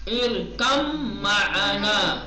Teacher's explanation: बा के बाद मीम आया है तो बा को हस्म कर देंगे, मीम को तशदीद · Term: इदगाम